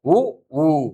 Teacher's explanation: உதடுகளை குவிக்கின்ற பொழுது கிடைக்கக்கூடிய எழுத்துக்கள் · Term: இதழ் குவிவதால்